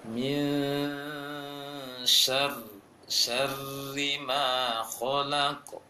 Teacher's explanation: kalimat syarri mulai dari masuk ke tasydidnya sampai terbaca kasrohnya dia tipis bunyinya. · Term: ro tasydid